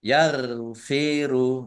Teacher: roin ini bukan kolkolah, jangan dipantulkan. Ya, jangan dipantulkan.